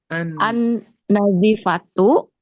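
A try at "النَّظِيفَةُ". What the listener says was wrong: Naknya panjang sedikit.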